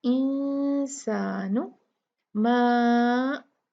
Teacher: और ये लाइट गुन्ना होगा क्योंकि सीन जो है वो लाइट लेटर है, मुफख्खम हरूफ में से नहीं है, तो इसको हम इंसानु मा। यहाँ देखिए माँ जो है ये 4 काउंट खींचा जाएगा। इस पे आप ये लहर का पर का निशान देख रहे हैं, ये जब आ जाता है तो ये माँ जो मत थी 2 काउंट, वो उसके लिए हमें ये पता चलता है कि इसको 4 काउंट खींचेंगे। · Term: मद जायज मुनफसिल